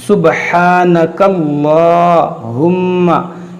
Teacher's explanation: यहाँ पर देखें ये बा में कलकला होगा सुब, ये हा को नरमी से अदा करेंगे और थोड़ा खींचेंगे एक अलिफ के बराबर